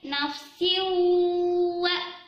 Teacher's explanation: Terus ada dengung juga di bagian nafsiwa. Ada tanwin bertemu waw. Itu disebut dengan idgham bigunnah ya. Hati-hati, di situ juga udah dibaca dengung yang lama.